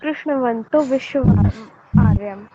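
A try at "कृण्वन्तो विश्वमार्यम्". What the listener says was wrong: कृष्ण नहीं है जी, वो कृणवंतो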